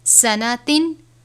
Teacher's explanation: نون کے بعد الف نہیں ہے تو اس کو سناتن پڑھنا ہے، سناتن نہیں پڑھنا، یعنی لمبا نہیں کریں گے